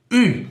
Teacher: When you first see it, it even looks confusing, almost like the letters B and L stuck together, but it's not a consonant at all. It's actually a vowel, and it sits in this weird space between E and U.